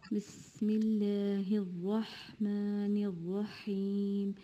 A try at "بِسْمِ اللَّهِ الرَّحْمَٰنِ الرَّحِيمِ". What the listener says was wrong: So as we said, the Bismillah is good, but just open your mouth more, you will make your letters more clear. Bismillah, it's not like Bismillah. If you open your mouth wider, Bismillah ar-Rahman ar-Rahim.